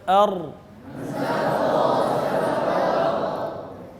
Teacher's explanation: اب اس میں جو را ہے، را کے اندر ہے ایک صفت کہتے ہیں، اس کو کہتے ہیں صفت تقریر، یعنی کہ را کے اندر زبان میں ہلکی سی کپکپاہٹ پیدا ہو، زبان میں ہلکی سی کپکپاہٹ پیدا ہو، زیادہ نہیں، ایسا نہیں کہ آپ نے بالکل موٹر سائیکل چلا دی، ایسے نہیں، ہلکی سی کپکپاہٹ جس کو آپ خود محسوس کریں، یہ را میں پیدا ہوگی، اس کو کہتے ہیں صفت تقریر۔